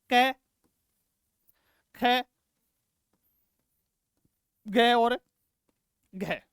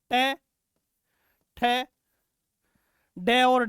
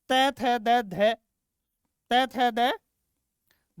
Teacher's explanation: दो उच्चारण अवयव एक दूसरे को स्पर्श करते हैं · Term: स्पर्शी व्यंजन